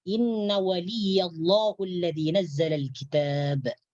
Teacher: Jadi Allah ditebalkan. Sebab sebelum lafzul jalalah di sini ada huruf berbaris fathah atau baris atas. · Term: tafkhim lafdul jalalah